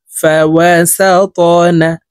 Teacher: فا زبر فا، واو زبر ওয়া, ফাওয়া, সিন ত জবর সা ত, ত কলকলার হরফ উপরের দিকে ধাবিত করে ধাক্কা দিয়ে উচ্চারণ করব।